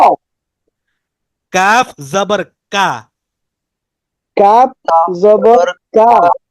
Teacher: গোড়া এবং মাঝখানের মাঝামাঝি জায়গা থেকে কাফটা উচ্চারিত হয়